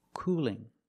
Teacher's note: it's a light L because it's between vowels